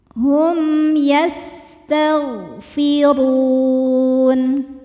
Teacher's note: Selanjutnya ada izhar syafawi. Sebab mim sukun menghadapi huruf selain mim dan ba yaitu huruf ya. Cara bacanya mim dibaca jelas. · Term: idhar syafawi